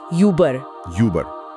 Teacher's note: इसकी ध्वनि यू जैसी होती है, लेकिन होंठ ऐसे होते हैं जैसे आप सीटी बजा रहे हो। मतलब होठ गोल करके ई की आवाज निकालनी है।